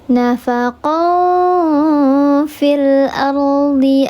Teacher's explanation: dibacanya dia disamarkan disertai dengan gunnah 3 harokat, namanya ikhfa hakiki yang ausat